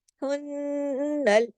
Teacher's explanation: آواز کو نون پہ جا کے ناک میں چھپانا ہے، بڑا غنہ کرنا ہے